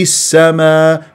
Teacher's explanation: في صفير واعطيه جريان صوت النفس